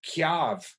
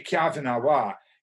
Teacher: we tend to say here kyave as if it was k y rather than t y and pronounce the y more